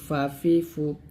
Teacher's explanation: ফা হচ্ছে হাসিমুখে দাঁতের ঠোঁটে আদায় হবে অর্থাৎ উপর দুই দাঁত নিচের ঠোঁটের পেটে লাগিয়ে ফাটা উচ্চারণ করতে